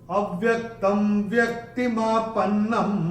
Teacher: भक्त, त के ऊपर ये जो अनुस्वार है उसके बाद का अक्षर है व, और अनुस्वार के बाद जब व आएगा तो अनुस्वार का उच्चारण होगा म · चरण की समाप्ति पे अनुस्वार आएगा तो उसका उच्चारण केवल और केवल म ही होगा